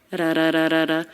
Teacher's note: the T here is a flap T because it comes between two vowel sounds.